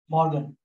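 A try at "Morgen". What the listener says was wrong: Like short, like a O sound. So O is counted as a long, O is counted as a small. Like short O.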